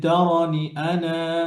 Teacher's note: আনা পড়ার সময় যদি আপনি এভাবে থামেন যে তারানি আনা তখন মাদ হবে আর যদি মিলিয়ে পড়ে যান তখন মাদ হবে না ইন তারানি